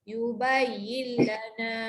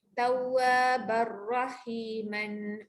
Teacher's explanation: Kalau jumpa lam ra, okey, masuk bunyi lam ataupun ra tapi tak ada dengung. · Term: idgham bila hunnah